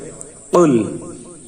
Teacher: কফের উচ্চারণটি জিহ্বার গোড়া তার বরাবর উপরে তালের সঙ্গে লাগিয়ে একটি আওয়াজ হবে, টাচ করে একটি আওয়াজ হবে কুল।